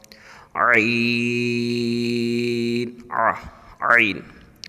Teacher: یہ حلق کے درمیان سے